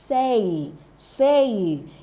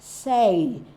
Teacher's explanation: It has a diphthong, E and E. E and E, it glides from A to E